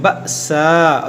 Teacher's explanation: حمزہ ساکنہ ہے، اس کو ہم جھٹکا دے کر پڑھیں گے